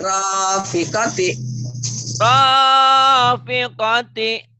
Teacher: Pendek, ro-nya doang yang panjang.